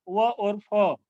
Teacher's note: दंतोष्ठ्य, ये नीचे का ओठ और ऊपर के दांत को टच होने से व और फ, ये जो दंतोष्ठ्य होते हैं दांत और होठों के मिलने से इनका उच्चारण होता है।